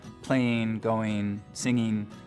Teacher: ing endings pronounced as een